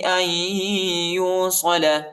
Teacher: ویقطعون ما امر اللہ به ان یوصل، حمزہ کو یا کے ساتھ ملائیں گے، یا کے اوپر شد آیا ہے، نون نہیں پڑھا جاتا، ٹھیک ہے. ادھر ہم نے ادغام کرنا ہے، یعنی ملانا ہے، حمزہ کو یا کے ساتھ ملانا ہے اور غنہ بھی کرنا ہے